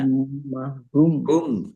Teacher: Tumma hum mim tasdid dibaca ghunah atau mendengung. Ditahan biar tampak mendengungnya.